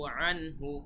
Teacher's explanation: আমরা কোনো গুণনা করিনি, আন হু স্পষ্টভাবে বলেছি। আমরা কিন্তু বলিনি আং হু, এরকম কিন্তু বলিনি, এবং বললে সেটা খুবই ভুল হবে।